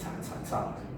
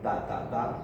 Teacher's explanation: the British T is pronounced here with the tip of the tongue in contact with the alveolar ridge